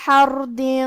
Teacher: کیونکہ اس پہ اور حرف دال پہ زبر ہے تو ہم یہ دونوں زبر کو ظاہر کریں گے۔ کلمت حردن میں حرف الحا کو ہم حلق کے درمیان والے حصے سے پڑھیں گے۔ یہاں حرف الراء ہے، یہاں را کا حکم ہے تفخیم کیونکہ اس پہ جزم ہے، لیکن اس کے پہلے والے حرف پہ ہا پہ زبر ہے تو ہم را کو موٹی آواز میں پڑھیں گے۔